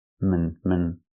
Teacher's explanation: The second syllable is relaxed and closed.